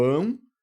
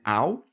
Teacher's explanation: apresenta um ditongo nasal, sim, porque esse som sai pelo nariz